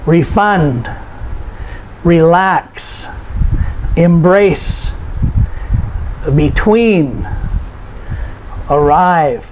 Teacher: these are two-syllable verbs, and we notice the stress is put on the last syllable.